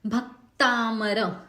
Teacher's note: जैसे कि पहला ही जो शब्द है भक्तामर, भ जो है ह्रस्व है, क से त जुड़ा हुआ है, वो जोड़ अक्षर हो गया। सो इस जोड़ाक्षर के पहले भ ह्रस्व आया है तो हमने भ पे जोर लगाया, तो क से त का उच्चारण जो है वो सही होगा।